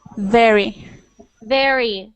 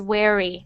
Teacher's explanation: sometimes when you make the V sound I hear them like w